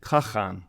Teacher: in the Middle Mongolian language, you can say that it's more something like khagan with an fricative in the middle of the word